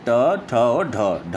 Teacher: जो टा वर्ग के अंतर्गत आता है वह मूर्धन्य ध्वनि है, उसे हम कहते हैं, क्योंकि वह मूर्धन्य से उसका उच्चारण मूर्धन्य से होता है।